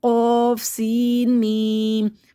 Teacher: قوف کو موٹا پڑھنا ہے، سین کو سیٹی سے پڑھنا ہے، میم کو ہونٹوں سے پڑھنا ہے